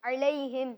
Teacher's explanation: یا ساکن سے پہلے زبر ہو تو کیا ہوتا ہے؟ تو اس کو کھینچیں گے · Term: یا لین